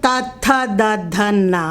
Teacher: त वर्ग जो है दंत को स्पर्श करता है